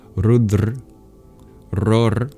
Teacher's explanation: if the schwa gets deleted, as happens for many Indian languages